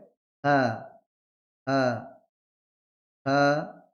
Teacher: হাটা কোথায় হবে? নিম্ন কণ্ঠ থেকে হবে। কণ্ঠনালীর শেষ নিম্ন ভাগ হতে শুরু হবে। নালীর নিম্ন ভাগ।